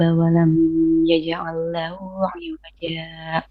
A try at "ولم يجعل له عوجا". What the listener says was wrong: Walam, we don't need to make two beats of gunna. It's walam and that's it. We don't say walam, it doesn't exist in Tajweed of Hafs and Asim, okay? When we have a meme with a shadda, that's when we're going to do two beats, yeah?